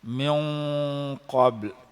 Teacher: Huruf ikhfa kena dengu dua harakat. Dengu pula, dengu tebal, pasal qaf tu huruf tebal.